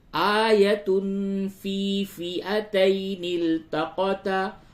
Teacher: آیت تنوین کے بعد فا ہے، اخفا کیجئے